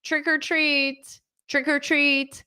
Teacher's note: so it sounds like one word because this or is pronounced as an R but it's connected